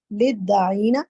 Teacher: جب آگے تشدید آ جائے گی نا تو لام دال سے مل جائے گا